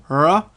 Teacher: the r could come more from the back of the throat, r, which would look a lot more open-mouthed and similar to our vowel type shape.